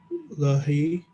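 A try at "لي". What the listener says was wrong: When it becomes ya, we say li. Li. We don't say lai. We say li. Say li,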